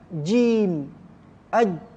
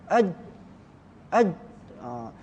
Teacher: huruf ni jim contohnya tengah lidah bertemu dengan langit atas tu kan